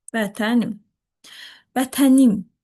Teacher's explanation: Artıq im hecasında vurğu var.